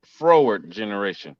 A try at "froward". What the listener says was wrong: It's a difference between forward and froward.